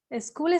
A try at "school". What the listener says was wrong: Be careful with the pronunciation of the S at the beginning of the sentence. You say school. It's school. No I-E in there.